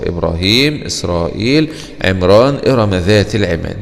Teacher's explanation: كلمة إبراهيم، برضو بنفخم الراء، مع ان الراء هنا قبلها الراء مفتوحة وقبلها ساكن وقبل الساكن مكسور، ومع ذلك تفخم الراء. كلمة إسرائيل، عمران، إرم ذات العماد، برضو نفس الكلام بنفخم الراء في هذه الكلمات